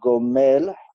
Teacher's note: It's slightly more guttural, so it's almost it's not oi but o, right, which is a slightly deeper and different sound. So there is that oi sound, but it is slightly different.